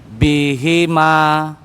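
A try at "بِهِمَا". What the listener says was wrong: Sekali lagi Bapak, pendek nian ya. Coba Pak dilebarin.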